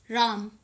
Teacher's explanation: जिसमें हम रा पर जो है थोड़ा सा स्ट्रेस देंगे, मैं जो है फ्लो में बोलेंगे, जैसे राम।